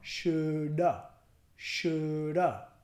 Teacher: Vamos a quitar el H, should have, y decir shoulda. También estamos cambiando la A, la vocal A, en have y convirtiéndolo al schwa